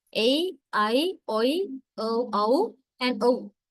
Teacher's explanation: Closing diphthongs, because E is a closed vowel and U is also closed vowel. So the glide takes place from elsewhere to the closed position.